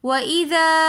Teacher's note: وَإِذَا أَظْلَمَ کے اندر مد منفصل ہو رہی ہے تو اس لیے ہم اس کو وَإِذَا کھینچ کر پڑھ رہے ہیں۔